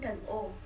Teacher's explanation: vokal belakang, vokal yang dihasilkan saat posisi lidah di bagian belakang, ada U dan O.